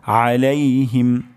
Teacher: আইন গলার মাঝখান থেকে উচ্চারণ হবে